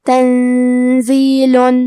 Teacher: کلمت تنزیل میں نون ساکن ہے، پھر حرف زے ہے، زے حروف الاخفاء میں سے ہے، تو ہم یہ حکم کو غنہ کے ساتھ ادا کریں گے